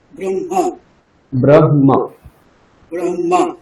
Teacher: আগে হকার আছে এজন্য আমরা আগে হ বলব তারপরে ম বলব